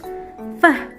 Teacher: it is actually voiceless because when we say the f, air passes through open vocal folds